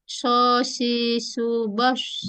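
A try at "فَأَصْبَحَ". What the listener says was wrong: Loh. Nah, itu masih huruf sin. Ya, masih sin ya. bedanya dengan sin, dia harus tebal, lidahnya naik. Su.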